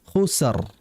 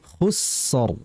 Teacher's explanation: Yang betul alirkan sinnya terlebih dahulu.